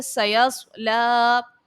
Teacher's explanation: صاد حرف مستعلیہ کا ہے، اس کو پر پڑھیں گے، لام کو کھینچ کر ادا کریں گے، اور اس کے بعد الف مدہ ہے، الف سے پہلے زبر ہے تو الف مدہ اور یہاں پر ایک الف کی مقدار کھینچیں گے۔